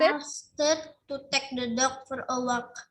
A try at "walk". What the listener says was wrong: Yes, walk-nya L-nya silent. Lupa nih silent L. Ini bunyinya AU-nya bunyinya O.